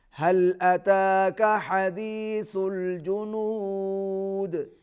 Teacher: حدیث ہا کو پھر آپ نے حلق سے ادا کرنا ہے اور سا کو نرمی سے ادا کرنا ہے. اور جنود دال پر ہم وقف کر رہے ہیں, یہاں پر قلقلہ ہوگا